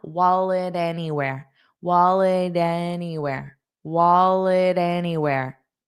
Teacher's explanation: wallet, it'll have a flap t sound. So, we just don't push out that sound.